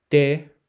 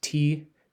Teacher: T, you could say it yourself and hear that where your tongue naturally goes. If you're speaking Spanish, the T is going to be closer to your teeth, dental.